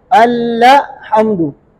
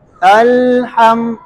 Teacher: अल्लाह हमदू, ये हा पढ़ते हुए ना जुबान को सख्ती से जो है ना अपने मखरज से, लाम के मखरज से हटाते हैं। अल में जब जुबान लाम के मखरज में लग जाती है तो वो सख्ती से जुबान को हटाते हुए हा को अदा करते हैं। इसकी वजह से इसमें ल इस तरह की आवाज आती है, अल्लाह हमदू।